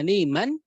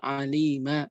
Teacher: نعوض عن تنوين الفتح ألف عند الوقوف بمقدار حركتين · Jadi diiwad, diganti. Yang tadinya tanwin fathah menjadi panjang. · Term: مد العوض, mad iwad